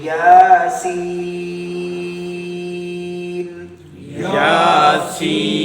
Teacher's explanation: اب یا پر چونکہ مد نہیں ہے، یا کو نہیں، یا پر کھڑی زبر ہے، ایک الف کی مقدار لمبا کریں گے، سین کو ہم زیادہ لمبا کریں گے